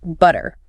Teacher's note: You hear the puff of air with the T. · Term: Clear T